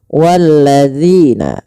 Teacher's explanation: panjangkan dzi sepanjang dua harakat karena ia ada bacaan mad thabi'i